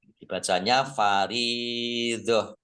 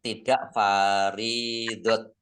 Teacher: Faridah ro kasroh ya sukun mat tabi'i panjang 2 harokat. Tak marbutoh ini kalau waqaf dibacanya hak sukun. Dibacanya faridah.